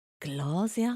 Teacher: Oh no, actually it's not really an S. It's like not really a Z. It's like between an S and a Z.